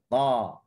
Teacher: Makhrajnya, saya tahu ramai yang dah tahu, hujung lidah diletakkan di gusi. Okey, hujung lidah diletakkan di gusi dan kita tahu dia adalah huruf yang bersifat dengan syiddah · Pertemuan hujung lidah dengan gusi itu adalah pertemuan yang kuatlah. Okey, yang mana kalau kita sebut dengan huruf sukun up, okey, dia terus putuskan suara. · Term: huruf ta